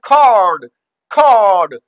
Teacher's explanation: और ये CO, अब ये देखो ओ, यहाँ पे ओ से COD होता तो कॉर्ड होता, ओ की कौन सी साउंड बनती, क्लोज सिलेबल हो जाता, तो डी की क्लोजिंग की वजह से ओ की कौन सी साउंड बनती, ओ। लेकिन यहाँ आर आ गया ओ के बाद, तो ये आर इस ओ को कंट्रोल करेगा और ये बना दी उसकी लॉन्ग साउंड, तो कॉर्ड कॉर्ड।